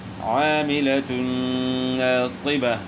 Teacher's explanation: عاملة ناصبة، تو تنوین کے بعد حروف یر ملون میں سے نون ہے، تو دو پیش کی تنوین کا جو ہے ادغام ہوا نون ساکن نون کے اندر، تو یہاں جو ہے ادغام مع الغنہ ہوا۔